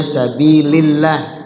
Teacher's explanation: lafaz Allah dibaca ter tarkik tipis maksudnya Sabilillah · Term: tarqiq tipis